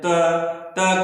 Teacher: तो हमारी जीभ जो होती है वह दांत में टच करती है